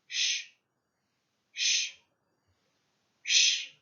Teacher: so as in help as a guide you can try to push the tongue so the middle of the tongue is pressed against the palate